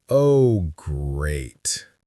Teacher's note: with a low, falling, slow pitch, I sound sarcastic and disappointed